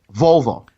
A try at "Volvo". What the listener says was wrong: Sounds like you're saying vulva. It's like the car.